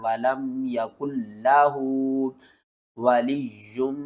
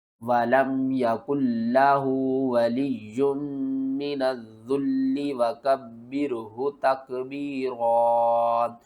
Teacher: یا کو دو بار پڑھیں گے، میم کے ساتھ ملائیں گے، میم مشدد ہے غنہ کریں گے